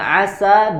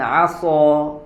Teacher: Sin dengan Shad satu makhraj tetapi sifatnya berbeda yang Sin tipis Shad tebal